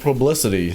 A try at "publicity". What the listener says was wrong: You said prub. You just sounded funny.